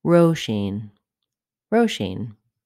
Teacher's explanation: Letter S is pronounced as sh, Roisin. The stress falls on the first syllable in this name